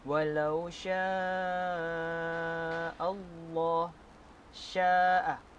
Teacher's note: Selanjutnya, walau syaa Allah, syaa, huruf mad berjumpa dengan hamzah. Hukum mad di sini adalah mad wajib muttasil, dan hukum bacaan, panjang bacaan mad di sini adalah 4 atau ke 5 harakat.